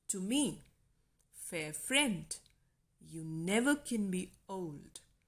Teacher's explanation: to is unstressed me is stressed fair is unstressed friend is stressed · these syllables follow the pattern of unstressed and then stressed syllables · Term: iambic pentameter